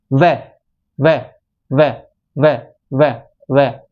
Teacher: जो हमारा नीचे वाला होठ है ना वो ऊपर की तरफ जाएगा और जीभ है वो दांतों को टच होगी · पहला जो सूत्र है हमारा नंबर 7 वाला, वो बोलता है कि वकारस्य दंतोष्ठ है, मतलब जो वकार है ना वह, उसका उच्चारण स्थान दांत और होठों से होता है